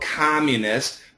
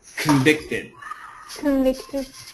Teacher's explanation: This one is a short O, communist. But this is a schwa sound, convicted.